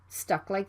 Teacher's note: is right before the consonant l so it can be unreleased you need to stop the k sound and move to the l sound right away stuck like don't say stuck like and the k sound is